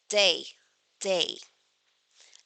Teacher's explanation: But in English, it is on the point of articulation is the tongue and the alveolar ridge. The blade of the tongue approaches the alveolar ridge.